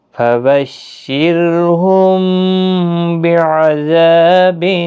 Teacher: میم ساکن کے بعد متحرک با آیا ہے، اخفاء شفوی ہوگا